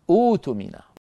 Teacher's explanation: فاننا نبدل الهمزه الساكنه التي هي همزه القطع حرف مد مجانس لحركه الهمزه الاولى